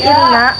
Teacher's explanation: hukumnya ghunnah sebab huruf nun bertasydid untuk cara membacanya dengan dengung serta ditahan selama 3 harkat